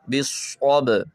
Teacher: یہاں پہ بھی صاد ہے حروف مستعلیہ اور اس کے بعد با ہے حروف قلقلہ، تو صاد کو موٹا کر کے با پہ قلقلہ کریں گے